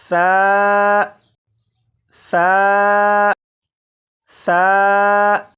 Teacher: सा को मैंने नरमी से पढ़ा, यानी सीटी की आवाज़ के बगैर पढ़ा। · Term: नरमी से पढ़ना